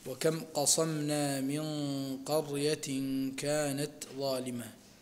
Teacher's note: النون الساكنة قبل القاف حكمها الإخفاء مع الغنة، والغنة تكون مفخمة لمجيئها قبل حرف مفخم وهو القاف. ونون التنوين قبل الكاف من قرية كانت، تخفى في الكاف وتكون فيها غنة بمقدار حركتين، وتكون الغنة مرققة لمجيئها قبل حرف مرقق وهو الكاف.